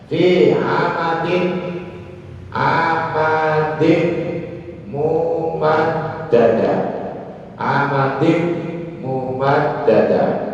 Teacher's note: Tanwin ini langsung masuk ke mim, itu baru idgham.